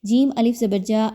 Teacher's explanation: جیم الف زبر جا، الف مدہ ہے، 2 حرکات کے برابر اس کو پڑھیں گے۔ را کے اوپر چونکہ زبر آ گئی ہے اس لیے اس را کو پر پڑھا جا رہا ہے، موٹا کر کے پڑھنا ہے، باریک نہیں پڑھنا۔